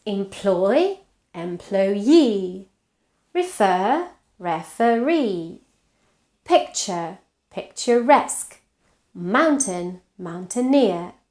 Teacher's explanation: regardless of where the stress was in the original word, the derived word has the stress on the suffix